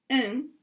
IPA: ən